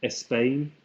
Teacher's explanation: the insertion of little vowels, as in Espagne, and a little E inserted before the SP